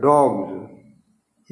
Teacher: तो गा के बाद सा नहीं आ सकता, बोल ही नहीं सकते, वो जा बोला जाएगा, डॉग्स। इसी तरह बैग, गा जो है घोष है, तो उसमें एस जो लगेगा वो जा हो जाएगा, बैग्स।